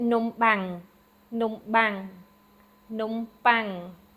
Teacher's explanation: It's actually that bang sound, that P without the aspiration